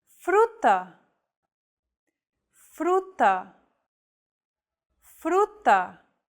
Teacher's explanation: don't roll your tongue like an English r most of the air should go around the sides of your tongue